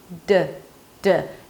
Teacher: The tip of the tongue goes up and you release it, and that's the D.